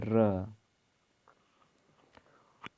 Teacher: इसमें मुख द्वार जीभ की नोक से शीघ्र बंद होता है और 2-3 बार खुलता है, र। उच्छिप्त इनमें जीभ की नोक उलटकर तालू को कुछ देर छूकर मुख्य द्वार को झटकते से खोलती है, ड़।